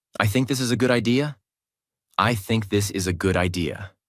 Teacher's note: let your voice fall at the end of the sentence. This tells the listener, I am sure. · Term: falling tone